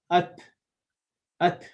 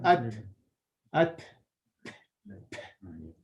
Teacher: you have to release your tongue a bit, and you'll see a breath sound coming from it. At. I'm exaggerating a bit, but at. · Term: hums